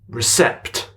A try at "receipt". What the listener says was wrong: The P is silent. It's receipt.